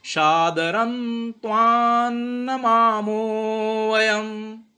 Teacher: सादरन यहाँ पे न बन जाएगा उसका, क्योंकि पीछे ता लगा है, इसलिए रा के पीछे न लग जाएगा। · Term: अनुसार